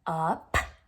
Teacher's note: it's like a puff of air they can feel the breath on the back of your hand